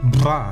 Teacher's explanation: la vibrante múltiple bilabial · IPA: ʙa